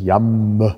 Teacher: da hören sie ganz klar langes m